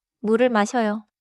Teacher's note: The 리을 sound moves forward into 을. 물을 becomes very smooth.